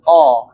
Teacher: Lalu kedua qof itu dia bukan di bibir namun keluarnya dari pangkal lidah agak ke dalam ya dekat dengan makhraj kaf. Jadi jangan sampai o o jangan maju tapi mundur dia.